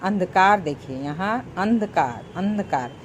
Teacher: अंधकार लग रहा है ना, नाक से निकल रही है हवा। अंधकार जैसे अंधा, देखिए ये अनुस्वार है।